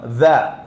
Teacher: ദാലോ നാവിന്റെ അഗ്രം മുകളിലത്തെ പല്ലിന്റെ താഴ്ഭാഗം